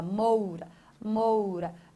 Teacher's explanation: Veja que moura, o som do O, ele é mais nítido do que o som do U. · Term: ditongo